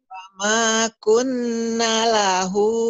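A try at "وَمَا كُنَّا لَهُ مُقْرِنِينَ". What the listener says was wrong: Pan ada madnya. Wama kunna, kan ada panjang. Mukrinin. Wama kunna. Kunnya gunnah, ditahan. Wama kunna lahu mukrinin. nanya panjang wama kunna wama kan ada alif atau bi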